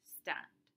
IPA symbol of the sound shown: t